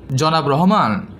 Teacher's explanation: জনাব শব্দটি উচ্চারণ করলাম তখন এটা ছিল লেভেলে মানে সাধারণভাবে ছিল আবার রহমান যখন উচ্চারণ করলাম তখন আমি রহমান টাকে একটু জোরে বা আমার তরঙ্গটাকে একটু উপরে হাই করে উচ্চারণ করেছি · আমি যখন জনাব শব্দটি উচ্চারণ করলাম তখন এটা ছিল লেভেলে মানে সাধারণভাবে ছিল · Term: স্বরতরঙ্গ